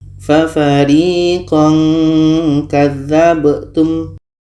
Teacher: maka ketika kaf ini bertemu dengan tanwin, makhraj ka tadi kita lihat jauh dari huruf nun, maka di sini menghasilkan bunyi nga.